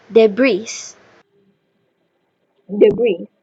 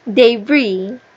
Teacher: So, this word is often mispronounced because the learner follows uh the spelling and try to pronounce the final s